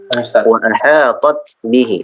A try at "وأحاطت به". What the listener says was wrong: وأحاطت ada ta'nis ya.